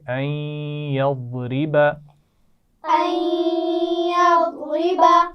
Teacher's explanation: یضرب ضاد موٹا ہے لیکن اس کے بعد را باریک پڑھی جانی ہے · نون ساکن کے بعد یا ہے تو آپ کو پتہ ہے کہ ہم یا سے ملائیں گے بھی اور غنہ بھی کریں گے